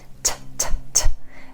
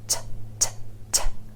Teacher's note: It's made by taking your tongue tip and tapping it on the ridge behind your top front teeth. T, t, t. You hear this sound at the beginning of words like to, take, tell. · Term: true T